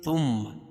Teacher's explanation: ثم میم مشدد، یہ مشدد میں غنہ ہوتا ہے